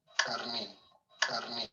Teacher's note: the ejective, the emphatic k sound